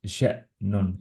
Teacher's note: justkui nagu korraks jätame seal õhuvoolu seal seisma, kui hamza on niimoodi keskel. ei ole nagu ša'nun, on ša'nun. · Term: glottal stop